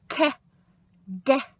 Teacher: those sounds are quite difficult because they're actually made right at the very back of your mouth. And children can sometimes find it quite hard to keep the front of their tongue still and open their mouth nice and wide and lift the back of their tongue.